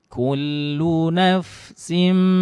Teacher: Nah, tanwin bertemu huruf mim, ya, idgham bi gunnah. Tanwinnya dimasukkan ke huruf mim lalu bi gunnah disertai dengan dengung. Kemudian ma juga dibaca 2 harokat saja.